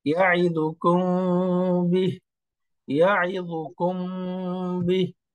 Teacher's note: সরাসরি মিমের উচ্চারণ করা যাবে না, অর্থাৎ মিমটাকে একটু লুকায় ফেলতে হবে, ঠোঁট দুইটা সামান্য ফাঁকা রেখে। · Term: মিম সাকিনের ইখফা